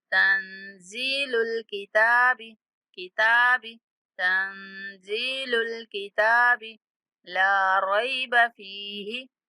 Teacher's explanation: नून पर इख्फा करेंगे, जा को थोड़ा खींच के पढ़ेंगे